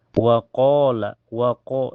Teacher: Waqala, waqo di awal ayat ada hukum mad tabi'i karena ada alif sebelumnya harakat fathah di qaf dibaca panjang dua harokat